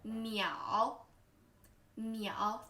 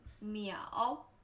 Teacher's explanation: third tone, first falling, then rising.